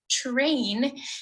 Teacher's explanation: affrication okay so when i pronounce it it's just terrain and the first phoneme my mouth produces is really ch